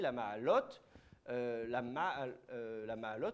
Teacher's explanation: le la, il n'est pas accentué, mais il ne faut quand même pas aller trop vite. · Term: meteg